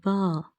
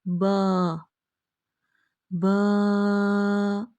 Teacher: Pronounced as ba, using inner part of the both lips to touch each other.